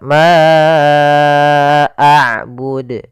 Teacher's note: sebagaimana tadi La yaitu adanya Hamzah yang datang setelah huruf mad kita panjangkan untuk huruf Ma panjangnya empat harakat · Kemudian ma a'bud, ada bacaan mad jaiz munfasil, yaitu suara ma-nya dipanjangkan sepanjang 4 harokat